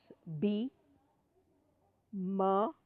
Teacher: the two lips are touching each other the label labal that is the two lips are touching in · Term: bilabial sound